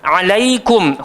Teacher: huruf ain keluar dekat tengah-tengah tekak, jangan naik kat hidung dia kena keluar dekat ain.